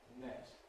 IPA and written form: net (net)